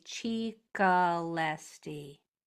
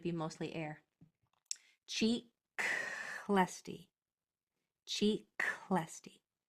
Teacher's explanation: So this KL blend is going to be mostly air. · You have to go straight from the K to the L. The way to do that is to have this one be all air.